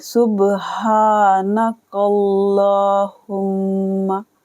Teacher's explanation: سین کو بے کے ساتھ ملائیں گے، سین با پہ با پر کلکلا کریں گے